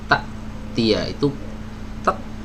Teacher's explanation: Ini adalah gambar makhraj saat hamzah dalam kondisi sukun ya, dalam kondisi sukun. Jadi huruf hamzah ketika sukun, pita suaranya itu tertutup ya, artinya tidak mengeluarkan sama sekali suara ya ketika dia bersukun, putus suaranya.